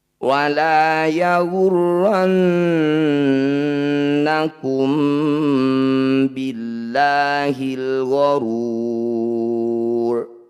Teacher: Ini disebut bacaan ikhfa syafawi. Cara bacanya bunyi mim sukun dengungkan. Rapatkan bibir, tahan 2 ketukan.